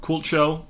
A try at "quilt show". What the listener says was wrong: Quilt show. It sounds like you're saying cult show, which would be something I'd be interested in.